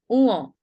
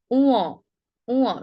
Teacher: খানিকটা নাকিস্বর। এটা হলো নাসিক্য ধ্বনি। অল্প প্রাণ বা মহাপ্রাণ ধ্বনির মতো না, এটা হলো নাসিক্য ধ্বনি।